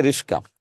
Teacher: দুইটা বর্ণ জায়গা পরিবর্তন করেছে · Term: ধ্বনি বিপর্যয়